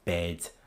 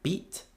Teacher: apart one is certainly not a long version of the other if we take two words like bed and beat I would argue that it's the E of bed that's longer